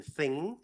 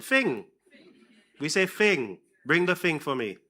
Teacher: in St. Lucia, we tend to say f for the voiceless one